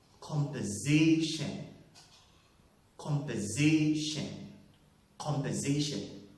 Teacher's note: That word also is having 2 stresses, secondary and primary. Secondary on the first syllable, primary on the third syllable. And the word is pronounced as composition. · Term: primary stress